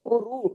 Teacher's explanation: رو کو پیش کی وجہ سے پڑھنا ہے ہیوی کر کے